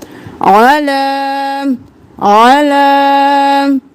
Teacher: आइन को बिल्कुल गले के दरमियान से निकालेंगे